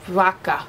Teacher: In Spanish, B and V go together. It's more of like a bilabial fricative.